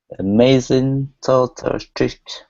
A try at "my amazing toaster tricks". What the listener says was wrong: Okay, so add that S in there. We have an S in toaster and an S in tricks. My amazing toaster tricks.